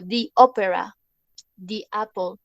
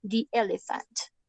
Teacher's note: Cuando después del artículo comienza una vocal, fonéticamente es mejor, o sea, se dice así, suena como si acá hubiera una I y no una E.